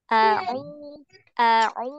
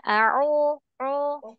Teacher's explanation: Ketika dhamma dimonyongkan bibirnya.